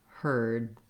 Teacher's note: you'll just hear that my vowel is longer and i do go up to stop that d herd so this is a phenomenon that we use a longer · Heard, I may also make a stopped D, so rather than heard with a strong released D, you won't hear the D sound. You'll just hear that my vowel is longer, and I do go up to stop that D